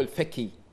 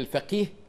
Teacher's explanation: وعلى رواية في رواية ينطقون القاف كاف